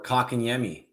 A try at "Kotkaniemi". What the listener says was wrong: I've never heard someone's had so much stress on the first syllable of that guy's name.